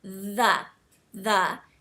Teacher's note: put your tongue in between your teeth and just just practice that initial sound and you should feel sort of a buzzing feeling on your tongue like it sort of vibrates a little theth and if you practice that and you can try it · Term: th sound, TH sound